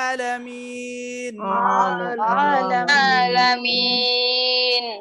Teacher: আইন কণ্ঠনালীর মাঝখান থেকে চাপ দিয়ে বলতে হবে, হামজার মতো যেন না হয়।